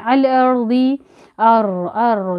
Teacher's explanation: रा को मोटा पढ़ेंगे क्योंकि रा पर तो साकिन है लेकिन उससे पहले ज़बर आ गया